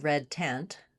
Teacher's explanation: Looking at vowel e as in red tent, we typically spell it with letter e. It's a lax central front vowel. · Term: red tent vowel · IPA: /ɛ/